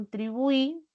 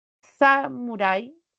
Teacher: Lo mismo sucederá con contribuí, tiene la mayor fuerza de voz en la última, samurai también en la última.